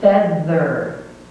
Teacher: The tongue touches the upper teeth, and air vibrates through, and there is vibration. The sound is made by the air going through the tongue, touching the teeth, and vibrating.